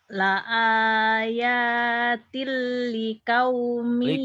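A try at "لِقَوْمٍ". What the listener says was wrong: Liko, kau dan aku suka den kau jangan kau jangan likau. Huruf O orang Bontang, likau aja ya, nggak apa-apa.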